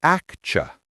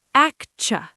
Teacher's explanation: 3 syllables. Yes, the TU in the middle makes a ch sound, like in cheese or church.